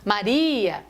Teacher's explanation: quando você fala Maria, o I é tônico, o I é vogal, ele não pode ficar junto com o A.